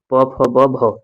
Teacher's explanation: दोनों होठ आपस में जब चिपकते हैं तब जाके प वर्ण का फ वर्ण का प फ ब भ ये सारे वर्णों का उच्चारण सही तरीका से कर पाते हैं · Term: ओष्ठ